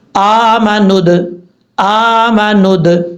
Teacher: دال ساکن ہے حروف قلقلہ میں سے ہے اس لیے یہاں پہ قلقلہ بھی کیا جائے گا · حمزہ کے اوپر کھڑا زبر ہے ایک الف کی مقدار لمبا کر کے پڑھیں گے